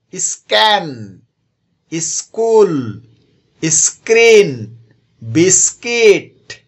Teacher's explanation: আর এস এর পরে যদি খেই অথবা সি অথবা খিউ দেওয়া থাকে, তাহলে সেই জায়গাতেও খ উচ্চারণ না হয়ে ক উচ্চারণ হয়